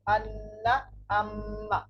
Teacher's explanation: 17 নম্বর মাখরাজ নাকের বাঁশি হইতে গুন্নাহ উচ্চারিত হয়